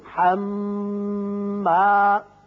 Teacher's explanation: حما میم مشدد ہے، غنہ کریں گے